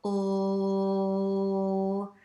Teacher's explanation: Now I'm going to place my hand here again on my nose, and this time hold an L sound, and I'm going to go oh, and this time I don't feel the vibration here on my nose because the air is not escaping from my nasal cavity, it's escaping from the oral cavity. And again, just to get an idea of this concept, you can alternate these two sounds, which I'm going to do now, again with my hand here, just to feel and understand resonance.